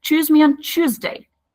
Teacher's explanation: the T is pronounced like ch in Irish accent.